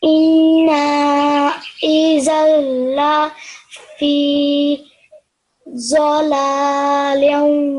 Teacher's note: we've got dhal with a fathatain, and when we join it to this lam mushaddad, we're not going to hear the fathatain